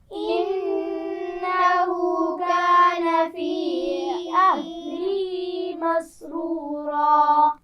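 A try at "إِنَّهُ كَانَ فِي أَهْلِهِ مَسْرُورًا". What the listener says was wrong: فی کو تھوڑا سا کھینچ کر پڑھنا تھا. فی اہلہ، پھر پڑھیے.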